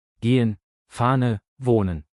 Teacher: H harfi sadece sözcüğün başındaysa okunuyor. Sözcüğün ortasında veya sonunda bir sesli harften sonra geliyorsa genellikle önündeki sesli harfi uzatıyor. Yani Türkçedeki yumuşak g harfi gibi.